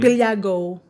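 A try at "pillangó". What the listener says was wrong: Close, but say the N as well.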